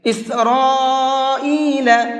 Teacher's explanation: اسرائیل، یہاں پر یہ بڑا مد ہے تو اس بڑے مد کو 4 سے 5 الف کے برابر کھینچ کر کے پڑھیں گے، اور اس بڑے مد کو مد متصل کہتے ہیں۔